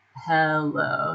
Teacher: the H sound doesn't really have a shape as much. It's just, like, still open